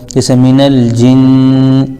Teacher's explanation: جیم کے نیچے زیر ہے لیکن نون کے اوپر تشدید ہے تو جیم کو نون ملا دیں گے · ہے تو جیم کو نون ملا دیں گے، جیسے من الجن، تو تشدید ہونے کی وجہ سے نون پر غنہ بھی ہوگا